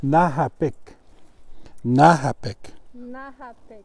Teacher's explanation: the K almost sounds like a G, like a soft G